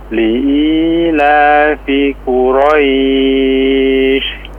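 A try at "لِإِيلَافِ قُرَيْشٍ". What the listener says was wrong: Ya, Afwan, dijelaskan huruf qafnya ya sekali lagi. Qu. Nah, diperkuat lagi mungkin.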